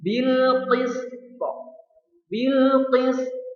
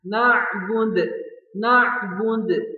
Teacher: Kalau kita baca semua harokatnya menjadi bil qisti, ya. Tapi karena karena huruf qalqalah, ya, dan di waqaf, maka qa-nya memantul dan pantulan yang besar. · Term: qalqalah kubra